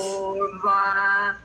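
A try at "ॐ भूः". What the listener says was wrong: Stop in between. Don't go for. Don't continue. Om, Bhur.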